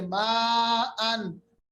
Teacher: कोई आवाज को हम नून नाक में नहीं ले जाएंगे, कोई गुन्ना नहीं करेंगे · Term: इजहार हल्की